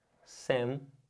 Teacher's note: A sílaba forte é a penúltima. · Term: paroxítona